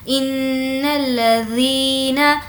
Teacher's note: ان الذین، ان حمزہ نون زیر، ان نون پر تشدید ہے تو غنہ ہوگا۔ ان الذین، ذال کو ہمیں سافٹ رکھنا ہے اور یہاں پر تھوڑا کھینچنا ہے، وہ اس لیے کہ یہاں پر یا مدہ ہے۔ یا مدہ کا مطلب ہوتا ہے یا جس پر جزم ہو اور اس سے پہلے زیر ہو۔